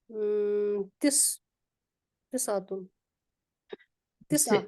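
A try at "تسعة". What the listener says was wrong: हाँ तिस आ, ये मुअन्नस है तो तिस आ आएगा। और मैंने बताया था इन सब पे जबर ही आती है, आपने पेश वेश नहीं लगानी। 19 से 20 तक जो गिनती होती है ना, सब पे जबर ही आएगी, तिस आ, आगे तिस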